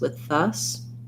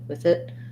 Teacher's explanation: i go a little bit more voiced as i'm linking those two whereas with it it's easier for me to keep that voiceless th